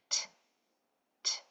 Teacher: The sound for T, T, is a voiceless sound, meaning there is no vocal cords being used. It's only air. It's just a spitting sound.